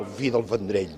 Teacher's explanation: El Vendrell, la pronúncia labiodental, està desapareixent.